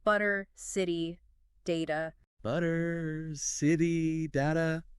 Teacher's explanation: a quick light D sound. Our mouths just find the easier path, you know. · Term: flap t